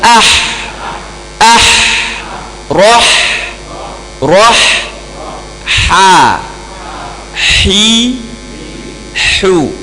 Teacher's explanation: Di tengah halqum huruf ha.